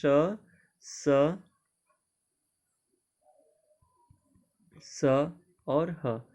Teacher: ऊष्म व्यंजन वो होते हैं जिनको बोलते समय मुख से गर्म हवा निकलती है।